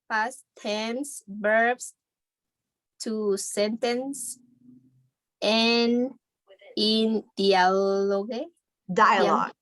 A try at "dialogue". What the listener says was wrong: Dialogue. Very good. Como dial, de marcar, pero diálogo.